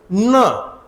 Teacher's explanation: आपली जीभ आहे ती वर आपली जी टाळूचा घुमटकार भाग आहे तिथे लागली पाहिजे